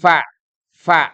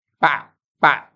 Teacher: bukan menutup sama sekali Kalau menutup sekali itu nanti pak jadi P fa fa itu lebih di apa digigit gigi tapi ee dia